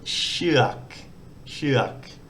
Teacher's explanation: In this case, it's like a SH initial consonant, then the vowel combination, and then we've got a gogai as a final consonant, and as a final consonant it makes an unreleased K sound